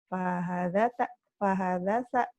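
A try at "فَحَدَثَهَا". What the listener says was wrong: Fahadatha. Fahadatha. Benar.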